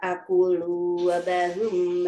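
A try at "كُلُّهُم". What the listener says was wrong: Bu, maaf, itu kulu buhum ya, baknya dhommah.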